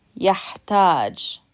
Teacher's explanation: the second syllable has stress because you're pronouncing it longer than you are the first syllable